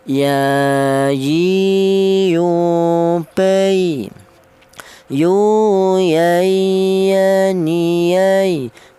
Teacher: Huruf ya ini keluarnya huruf berasal dari tengah lidah